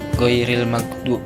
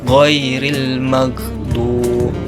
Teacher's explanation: Huruf ghain makhrajnya wasat halak, tengah tenggorokan.